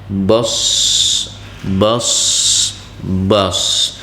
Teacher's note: Huruf shad memiliki sifat yaitu hamas, rokhawah, isti'la, itbaq, ismat dan sofir. Yang kuat terdengar huruf shad ini adalah sofirnya.